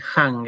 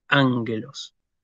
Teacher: la palabra empieza con espíritu suave lo cual me indica que yo no tengo que hacer una aspiración